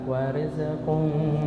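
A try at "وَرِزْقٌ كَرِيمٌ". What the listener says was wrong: Masih memantul. Warizqum. Masih memantul. Warizqum, warizqum. Z-nya dihilang. Warizqum. Masih. Jangan memantul, bukan kol-kolah ya. Warizqum. Masih memantul.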